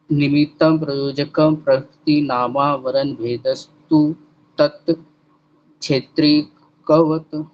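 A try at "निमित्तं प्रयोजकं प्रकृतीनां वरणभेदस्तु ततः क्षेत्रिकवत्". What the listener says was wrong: तत् नहीं है तथा है।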